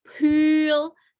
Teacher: Ada P ketemu I panjang, dia aspirated, jadinya pool.